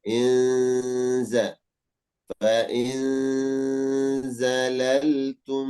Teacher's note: Ikhfa sama disertai dengan dengung. Ada dengungnya.